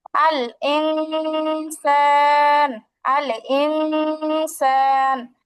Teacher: শুধুমাত্র গুনা করলে হবে না অনেস্বারের মত উচ্চারণ হবে অনেকটা এই গুনাটা যখন আমরা নাকের ভিতরে লুকাব যেমন আমরা যখন